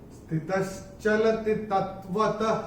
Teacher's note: चौथे चरण में जो विसर्ग आ रहा है चरण की समाप्ति पे, इसका उच्चारण केवल और केवल ह ही होगा।